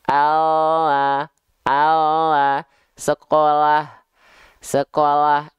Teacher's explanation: kelihatan yang nempel cuman bagian ujung lidah saja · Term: huruf L alfabet